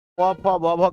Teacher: प वर्ग को हम ओष्ठ से बोलते हैं